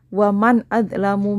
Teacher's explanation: [Musik] oke pada lafadz hukumnya adalah dinamakan dengan bacaan ghunnah musyaddadah cara bacanya adalah mim yang bertasydid didengungkan kira-kira 2 harokat